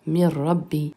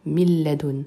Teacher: On a remplacé le nun de min par un waw et on appuie donc sur le son w, miwara. Même chose pour min rabbi qui devient mir rabbi ou min ladun qui devient mil ladun. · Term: El-Idram